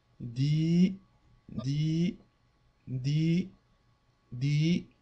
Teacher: lorsque l'on veut prolonger le son i on ajoute un ya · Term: voyelle longue